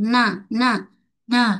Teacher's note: nun tak kira baris okey sama ada ada baris ke tidak ada mesti ada sifat ghunnah suara naik ke hidung